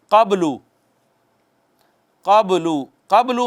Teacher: قبلو میں با ساکن ہے، حروف قلقلہ میں سے ہے، تو کہتے ہیں اس پہ ذرا چھوٹا قلقلہ ہونا ہے